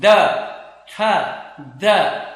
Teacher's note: हमारी ये जीभ जो है, टंग जो है वो टीथ के बीच में जाती है, तो इंटरडेंटल वो कंसोनेंट होते हैं।